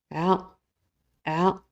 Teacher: la lettre a il vient aussi du milieu de la gorge c'est comme un a prolongé qui vient de la gorge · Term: Ain